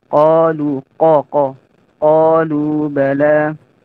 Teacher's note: qaf itu termasuk huruf isti'la, yaitu huruf yang naiknya pangkal lidah ke langit-langit.